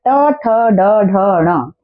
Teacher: पांचों के पांचों लेटर जब हम बोलते हैं तो हमारे मुंह के अंदर एक ही जगह पर हमारी जीभ टकरा रही होती है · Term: ट वर्ग